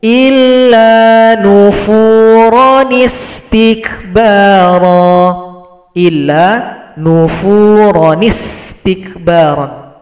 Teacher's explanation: Kemudian huruf ro yang awalnya mad iwad kita ringkas. Ron menjadi ro, hilangkan salah satu. Tanda panjang pun juga hilang. Ro dibaca pendek.